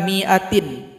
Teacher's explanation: mim kasro berjumpa dengan huruf alif maka dibaca pendek saja